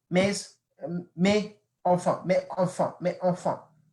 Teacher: You have to put the liaison between because it doesn't really flow if you don't put the liaison.